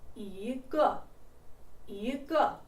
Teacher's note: before a fourth tone, 一 becomes second tone